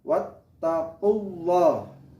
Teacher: Di situ ada lafal Allah yang didahului tanda dhamma. Kita tahu apabila lafal Allah didahului fathah atau dhamma itu dibaca tafhim. Tafhim artinya tebal.